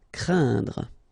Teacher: keep in mind that it goes in your nose, so you don't hear any N when I pronounce it, and then C plus R will produce the sound cr, craindre. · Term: nasal